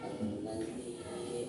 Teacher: cara membacanya itu dengan cara mentasdidkan atau mengidghamkan ya, serta dengan 2 harakat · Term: idgham mislain